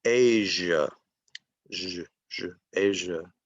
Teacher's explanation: And this word is also a voiced consonant, and it's pronounced Asia, Asia, and it's voiced, Asia. Okay, some people forget to voice it, and they'll say Asia, but it's voiced in English.